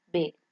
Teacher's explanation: We have P, that is voiceless, bilabial, stop, example pig. We have B, that is voiced, bilabial, stop